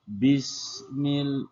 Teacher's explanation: Perhatikan pada kalimat atau huruf sin. Cara pengucapan huruf sin adalah dengan cara mempertemukan gigi atas dan gigi bawah.